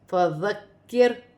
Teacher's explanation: ذال کو کاف کے ساتھ ملایا جائے گا، پھر کاف کو را کے ساتھ ملایا جائے گا · ذال نرمی والا حرف ہے، اس میں سیٹی نہیں ہوگی، نرمی سے ادا کیا جائے گا